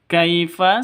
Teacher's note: sifat Lin lentur lemes tidak boleh disentat tidak boleh didengungkan